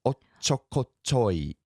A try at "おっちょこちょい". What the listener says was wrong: おっちょこちょい. There's a little hiccup with the little tsu at the beginning. おっちょこちょい.